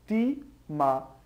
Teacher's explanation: a tônica é a antepenúltima então ótima é uma proparoxítona e por regra toda proparoxítona deve ser acentuada logo Nossa resposta